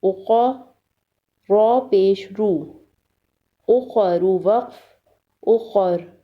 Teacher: قا کو پر پڑھیں گے یعنی موٹا پڑھیں گے اور را کو بھی موٹا پڑھیں گے۔